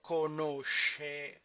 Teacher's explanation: Here the stem ends with a C, more properly SC. Now, when SC is followed by E or E, in Italian it is pronounced sh.